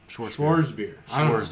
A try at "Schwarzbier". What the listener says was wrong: Yeah, Schwarzbier. Not Schwartz, because I don't There's no T.